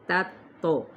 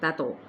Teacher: واو ہونٹوں کی نا تمام گلائی کے ساتھ، لا پہ الف مدہ، تا تو پہلے تا باریک ہے، پھر تو پر ہے، تا تو اس طرح تا تو اس طریقے سے، لیکن تو کو جلدی پڑھیں گے قلقلے کے ساتھ۔